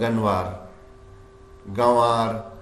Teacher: نون پورے پورے لکھے ہوئے ہیں پورے پورے نون ہیں ان کے نقطے بھی ہیں لیکن ہم اردو میں بھی ان کو غنّے کر کے پڑھ رہے ہیں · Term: نون غنّے